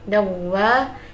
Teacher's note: bacaan idgham bi gunnah sebab fathatain bertemu dengan huruf wawu